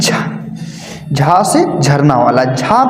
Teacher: झ आपका तालव्य भी होगा, महाप्राण भी होगा और घोष में भी आएगा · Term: तालव्य महाप्राण और घोष